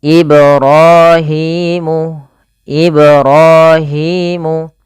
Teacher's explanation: pantulkan huruf ba pada lafal kata Ibrahim karena pada lafal ba tersebut ada bacaan Qalqalah yaitu memantul ibrahimu ibrahimu panjang ro dan Hi harus sama kedua-duanya hukum tajwidnya